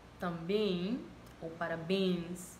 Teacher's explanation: estos diptongos son realizados de manera nasal, producidos de manera nasal